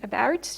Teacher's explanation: So, still important to know that unstressed vowels, when they are reduced, may reduce to schwa, okay, which is probably the most frequent case, and this may happen to all vowels, okay, in English. That is, if you think of the vowel A in about, you see it's reduced to schwa. Same for the vowel O in information, okay?